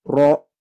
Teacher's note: Tebalnya karena lidah juga, bukan karena bibir. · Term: huruf ro